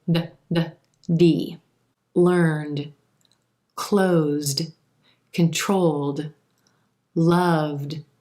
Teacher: when the word that you're starting with ends in a voiced consonant sound then the Ed ending is going to sound like d